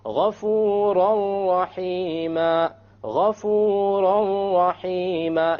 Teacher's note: You don't hear an N sound because you drop it. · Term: idgham without ghunna